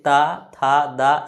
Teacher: जीव जो है दांत में सटेगा तो उच्चारण स्थान क्या हो जाएगा दंत